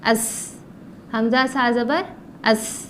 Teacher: سا زبان کی نوک اوپر کے دانتوں سے لگانے سے بنتا ہے. زبان کی نوک اوپر کے دانتوں کو لگانا ہے، جیسے کہ سا.